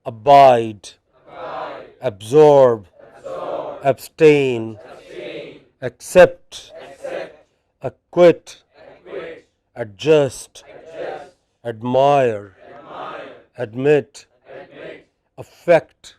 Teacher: some verbs with main stress on the final syllable